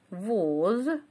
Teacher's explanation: Слово воз с буквой С на конце нет, да, есть только приставка такая. А поскольку «з» оглушается у нас, поэтому в транскрипции мы пишем звук «с».